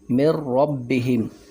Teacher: وہ کیسے کہ اس میں جو نون ساکن ہے وہ ہم نے نہیں پڑھا، میم کو را کے ساتھ ملایا، من ربہم، یہ بغیر غنہ کے ہم نے را میں ادغام کیا